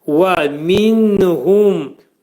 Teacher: Mim hərfi izhar olur. Ağız yumulur.